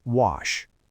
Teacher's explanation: Think of the word wash ends in an unvoiced sh sound. Add a t. Washed. I washed the car.